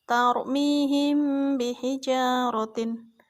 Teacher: Ikhfa syafawi adalah apabila ada mim sukun berhadapan dengan huruf ba, maka cara membacanya yaitu dengan suara samar antara mim dan ba pada bibir, kemudian ditahan 2 harokat seraya mengeluarkan suara ikhfa dari pangkal hidung